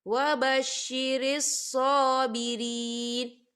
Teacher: صاد کے پر کھڑی حرکات ہے، تو ہم اسے دو حرکت کے برابر کھینچیں گے۔